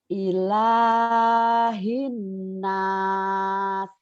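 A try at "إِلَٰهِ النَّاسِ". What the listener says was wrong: Walaupun saya tidak melihat Ibu, kelihatan kayak masih ragu gitu ya. Pengucapannya tuh masih ngomongnya tuh tertata, takut salah. Harusnya lepas aja. Ilahin nas.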